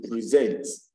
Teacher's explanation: while for present which is a verb we have the second syllable stressed